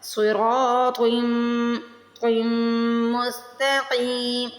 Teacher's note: صاد را طا تینوں کو موٹا پڑھنا ہے. را کو کھینچ کے بھی ادا کرنا ہے کیونکہ زبر کے بعد الف آ رہی ہے، الف مدہ آ رہی ہے تو میم پہ تشدید ہے تو میم پہ غنہ ہوگا.